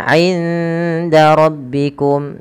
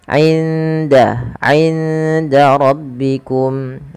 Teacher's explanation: Kemudian 'inda rabbikum. Nah, suara 'indanya nun sukunnya disamarkan ke huruf dal.